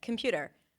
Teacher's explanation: there is O in computer. No, it's a schwa.